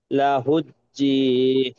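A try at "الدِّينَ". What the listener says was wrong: লাহুদ্দিন, জি নয় দি। ওয়াজালিকা জি নয় দি, দি।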